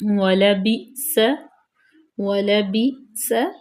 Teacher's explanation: کیونکہ حمزہ ساکن ہے تو اس لیے اس کو ہم جھٹکا دے کے پڑھیں گے